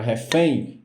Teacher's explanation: Então, refém, ela é oxítona. Quando você pronuncia a palavra refém, o fém é a mais forte. E na palavra, ela vem por último.